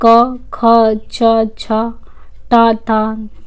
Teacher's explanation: इन ध्वनियों के उच्चारण में स्वर तंत्रियों में कंपन नहीं होता है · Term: अघोष